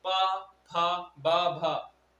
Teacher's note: ओंठ आपस में मिल रहे हैं तो इन्हें बोलेंगे ओष्ठ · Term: ओष्ठ व्यंजन